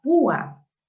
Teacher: la vocal U tiene la fuerza de voz y se separa de la vocal abierta A. Se forman dos sílabas distintas. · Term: hiato acentual